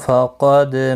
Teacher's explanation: دال ساکن پر قلقلہ ہے، قلقلہ ہوگا، اور قاف مستعلیہ پر پڑھا جائے گا.